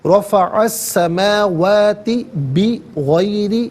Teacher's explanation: بغیر را کے نیچے زیر ہے، را کو باریک کر کے پڑھیں گے